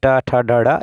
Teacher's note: ट वर्ग का उच्चारण स्थान क्या है, तो मूर्धन्य है, जिसमें ट ठ ड ढ इस प्रकार से होता है।